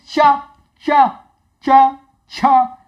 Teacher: ये जिह्वा हमारी ऊपर लगती है, इसमें तालु में लगती है।